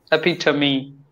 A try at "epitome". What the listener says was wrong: Beautiful. Perfect.